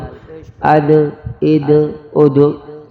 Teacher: دو نقطوں والا موٹا قاف، تا با جیم اور دال، اس کے اوپر آواز ٹپکا کھائے گی، قلقلہ ہوگا